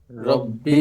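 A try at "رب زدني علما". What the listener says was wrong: রব্বিতে টান দেওয়া যাবে না, রব্বি জিদনি ইলমা,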